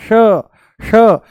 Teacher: जैसे ही हम बोलते हैं श, जैसे ही बोलते हैं हम श, मूर्धा ऊपर से बोला जाता है, श श, जीभ को थोड़ा सा ऊपर घुमा करके तालू से लगा करके बोला जाता है श